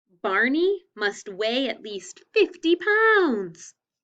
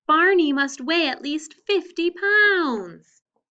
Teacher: notice how my voice goes up at the end